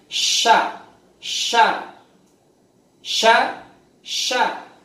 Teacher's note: Jadi makhrajnya tata dulu, tengah lidah nempel ke rongga atas. Ada angin berhamburan di mulut, nafas dilepas suaranya molor. Jadinya sya, sya, sya, sya. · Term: shin